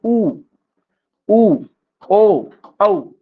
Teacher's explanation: उसके बाद उ ओ औ, ये सब क्या है, वृत्तामुखी स्वर है. यानी कि इन स्वरों के उच्चारण में ओठों का आकार क्या होता है, गोल होता है